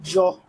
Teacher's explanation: जौ जो है स्पर्श संघर्षी व्यंजन है।